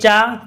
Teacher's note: तो आपका जो तालु है, तालु में तो आपके यहाँ पर ई और बड़ी ई, तालु मतलब होता है, क्या होता है, तालु में जब बोलते हैं चा, तो जीभ में जो आपके कह सकते हो जीभ है वो तालु की स्पर्श करती है